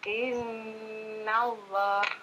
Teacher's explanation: Ingat nunnya bertasdid. Setiap nun bertasdid dibaca lama ya.